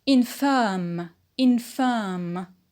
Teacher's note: The stress is on firm.